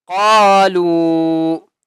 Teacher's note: لام واو مد پیش لو، چھوٹی مد ہے، لام کو تین الف کی مقدار کھینچ کر پڑھیں گے